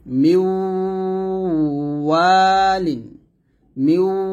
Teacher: তো এখন আমরা মিমকে ওয়াও সেটা মিলাবো, ঠোঁটটা গোল করে মিলে গুণা করব। মিওয়ালিন, মিউ এরকম ঠোঁট গোল হবে।